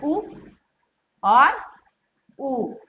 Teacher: इसमें देखिए उ और उ को ओष्ठ वर्ण इसलिए कहते हैं, जो हमारे कंठ से वायु निकलती है वो होठों को स्पर्श करती हुई बाहर निकलती है